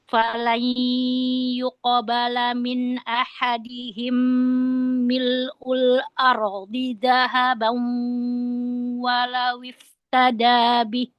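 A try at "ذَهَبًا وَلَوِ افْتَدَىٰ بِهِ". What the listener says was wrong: Dahaban wa, lebih lembut lagi idgham bi gunnah, jangan dinabar. Dahaban, ya nggak ketahuan di idghamnya, jangan ketahuan. Dahaban walau iftada bih. Wawnya dilembutkan lagi. Waw punya sifat lin, lembut lagi. Dahaban walau iftada bih.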